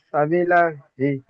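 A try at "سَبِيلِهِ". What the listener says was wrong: সাবি লাহি নয়, লামের নিচে জের আছে। সাবি লাহি নয়, লিহি।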